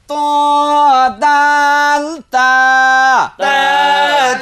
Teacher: জিহ্বার আগা সামনের উপরের দুই দাঁতের আগার সঙ্গে লাগাইয়া